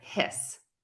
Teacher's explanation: if I say the word hiss that vowel sound sounds slightly shorter because my voice is turning off to get ready for that s